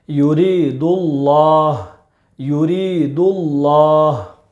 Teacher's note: لفظ اللہ کے لام سے پہلے پیش ہے، اس لیے لفظ اللہ کے لام کو پر پڑھیں گے یعنی موٹا پڑھیں گے